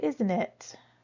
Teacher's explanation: this is when your voice will probably go down on the tag because normally we know if it's cold or not.